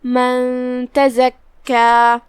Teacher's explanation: اخفاء کا معنی ہے چھپا دینا، لہذا ہم یہ نون ساکن کو چھپاتے ہوئے غنہ کے ساتھ یہ حکم کو ادا کریں گے